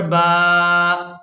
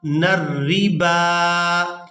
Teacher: یہاں پر ہم نے با کو کھڑی زبر کی وجہ سے کھینچ کر ادا کرنا ہے، واؤ کو اور الف کو یہاں پر ادا نہیں کریں گے